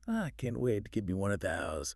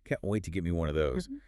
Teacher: The twang feels sharper, faster, and more nasal.